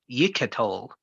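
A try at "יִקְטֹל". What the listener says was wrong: No, this one is silent because this herrick is a short vowel. So that's yik tol. learn which vowels are long and which ones are short.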